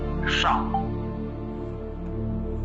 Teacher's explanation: शाह 3 तरह के कहे जा रहे हैं। तालब शाह, आपकी जिह्वा तालु की ओर जाएगी तो तालब शाह आएगा